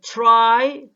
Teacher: the ra sound in this example loses some of its voicing because of the aspiration of t